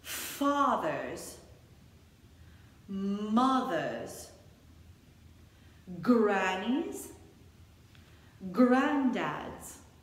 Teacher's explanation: We don't pronounce the R, so fathers, mothers, you got it.